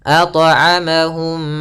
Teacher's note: Cara melafalkannya yaitu suara mimnya masuk kepada mim kedua dan ditahan mimnya. Ditahan m-nya. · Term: idgham mim